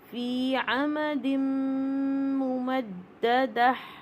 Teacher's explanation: اب دیکھیے فی میں دیکھیے یا ساکن سے پہلے زیر ہے 2 کاؤنٹ. عمدم تنوین کے بعد میم مشدد آ رہا ہے تو یہ نون ساکن اور تنوین کا رول ہے ادغام مع الغنہ، یہاں پہ فل غنہ ہوئے گا اور یہ تا مربوطہ ہا بن جائے گا.